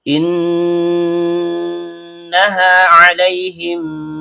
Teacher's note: Nun ujung lidah bertemu dengan langit-langit bagian tengah. Karena nunnya bertasydid maka terjadi hukum bacaan ghunah asli. Dibaca dengung dan setiap dengung keluar dari hidung. · Ada 2 huruf mim yang keluar dari bibir. Karena mim yang pertama sukun bertemu dengan huruf mim yang hidup, maka di sini terjadi hukum bacaan idgham misli atau idgham mimi yang dibaca dengung dan setiap dengung keluar dari hidung. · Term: gunnah asli